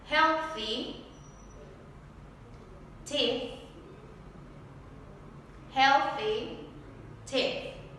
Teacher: El siguiente sonido es un poco particular porque tenemos que poner nuestra lengua entre nuestros dientes. Este sonido no existe en español, tenemos que practicarlo mucho para lograr una pronunciación adecuada.